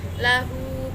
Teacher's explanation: Lahu, bacaan mad silah qasyirah sebab hu dibaca panjang satu alif atau dua harokat